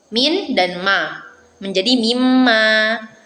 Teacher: konsonan n ini melebur menjadi m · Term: asimilasi komplit